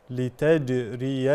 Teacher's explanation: فالجيم من صفاتها الشده اي انحباس الصوت